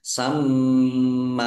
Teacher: mim tasdid ya dibaca gunah atau mendengung ditahan ya ditahan biar biar kelihatan mendengung.